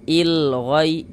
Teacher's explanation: Alif lam qamarah itu alif lam qamariyah itu biasanya disebut juga dengan izhar qamariah atau izhar qamari. Karena cara membaca huruf lamnya itu dibaca izhar. Ah, terbaca dia dengan jelas seperti itu.